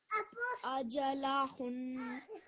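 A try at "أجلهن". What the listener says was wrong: Try a bit more of a nasal sound. Ajalahun.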